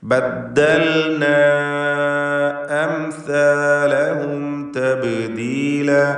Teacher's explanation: ബദ്ദൽന എന്ന് അവ്യക്തമാവരുത്, ബദ്ദൽ എന്ന് വ്യക്തമാക്കി ഇദ്ഗാം ചെയ്യാതെ ഇൽഹാർ ചെയ്ത് വ്യക്തമാക്കി ഉച്ചരിക്കണം. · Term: ലാമുൽ ഫിയാൽ